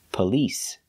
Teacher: The stress is on the second syllable. Police. It's not on the first syllable.